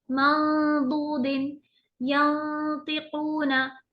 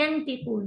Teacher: एक तो खींचेंगे भी, ऊपर से नून की आवाज को छुपा के रखेंगे।